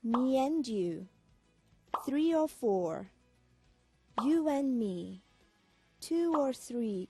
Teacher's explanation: Өмнөх хичээлээр бид vowel ending, vowel beginning буюу бид нар их шиг төгсгөлтэй, их шиг эхлэлтэй үгсийг хооронд нь linking буюу холбож дуудаж сурсан байгаа. Холбож дуудахад бидэнд харин я, в гэсэн авианууд жиргэлж дуудагдгийг сурсан байна